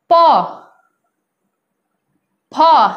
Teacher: होंठ जो है एक दूसरे को स्पर्श कर रहा है, होंठ के माध्यम से हो रहा है, जीभ का स्पर्श जो है होंठ के द्वारा हो रहा है, ठीक है। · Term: ओष्ठ